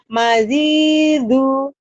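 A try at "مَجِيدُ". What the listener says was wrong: Jimnya keras. Jimnya keras. Jakarta, Jakarta, jinak merpati. Majidu.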